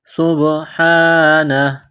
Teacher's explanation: وَلَدًا سُبْحَانَهُ، سُبْحَانَهُ، سین میں سیٹی کی آواز پیدا کرنی ہے، سین کو با کے ساتھ ملانا ہے، با پر قلقلہ کریں گے